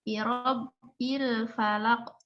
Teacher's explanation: lamnya tidak ada pantulan karena bukan termasuk huruf qalqalah